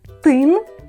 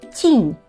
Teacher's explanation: У слові тин приголосні тн - це тверді приголосні звуки. А у слові тінь ть нь - це м'які приголосні звуки